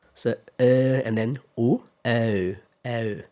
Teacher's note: That's the same neither one, but they start from slightly different positions. So in British English, o, the vowel begins with the neutral sound. So uh and then gradually moves towards o.